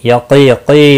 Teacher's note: या मद्दा है, एक अलिफ के बराबर खींच कर पढ़ेंगे। क़ाफ मुस्तालिया है, पूर्व पढ़ा जाएगा।